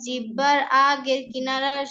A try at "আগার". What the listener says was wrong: একবার আগার, হ্যাঁ আগের না, আগার, আগার কিনারা।